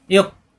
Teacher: এখানে ওয়া উপরে হামজা, ওয়া পড়তে হবে না, হামজা পড়তে হবে। হামজা সাকিন শক্ত